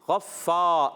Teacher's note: فا مشدد ذرا رک کر ادا کریں گے